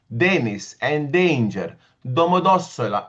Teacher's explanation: Domodossola, all soft. The D's and T's are very mild and soft.